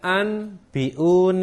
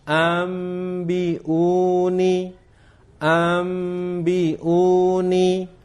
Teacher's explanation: Nun yang mati atau tanwin itu dibalikkan menjadi Bunyi mim Hai menjadi Bunyi mim ketika bertemu dengan satu huruf yaitu huruf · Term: iqlab